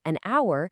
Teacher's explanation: we say an hour because the H is silent, giving us a vowel sound